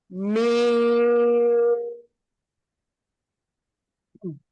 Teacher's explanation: இந்த மீன் ஷஃபத்தான், அதாவது இரண்டு உதடுகள்ல இருந்து வெளியாகுது